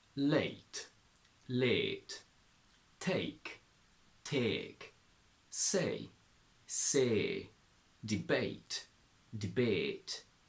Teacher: A very typical trait of northern accents is to transform the diphthong A into a long E. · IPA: /eɪ/